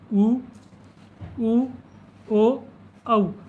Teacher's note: जैसे इसमें स्वर आते हैं उ, ओ, औ। जब इनका उच्चारण करते हैं तो हमारे होठ क्या है, एक वृत्त के समान आकृति बना लेते हैं। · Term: वृत्तमुखी